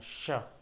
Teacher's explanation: तो अगर इनका उच्चारण जैसे करना हो, तालव्य स है तो आपको जो जीभ है तालु से टच करना है